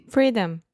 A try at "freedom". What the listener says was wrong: Yep, the final M, you did not close your mouth. You said freedom.